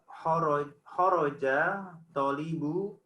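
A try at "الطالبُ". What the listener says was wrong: Khorojat langsung ke to, Pak. Tonya panjang.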